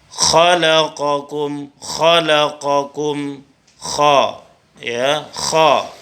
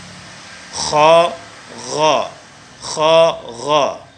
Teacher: huruf halak yang keluar dari tenggorokan ya, tepatnya di ujung tenggorokan. Kha, gha, ya, di ujung tenggorokan. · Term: makhraj huruf kha